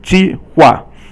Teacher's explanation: So they're both fourth tone here.